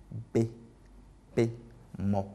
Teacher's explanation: Et ensuite avec les consonnes que j'ai classifiées, en fait les consonnes bilabiales, par exemple le B, le P et le M, voilà, sont des consonnes bilabiales. Bilabiales parce qu'elles font intervenir en fait les deux lèvres